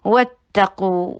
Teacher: वाव को होंठों की गोलाई से अदा कीजिए, फतहा के लिए जबड़े को खोलिए, ता के ऊपर शिद्दत के साथ इसको ज्वाइन कीजिए क्योंकि ता सख्त हरूफ में से है और फतहा के लिए जबड़े को खोलिए और शॉर्ट रखिए।